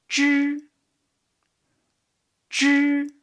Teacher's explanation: You can put your hand in front of your mouth to feel there is almost no air out.